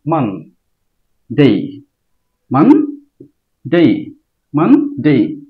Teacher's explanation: মান দ্রুত বলতে হবে মা উচ্চস্বরে বলতে হবে মানে মনে হবে যে মান যখন বলবো আওয়াজটা উপরের দিকে যাব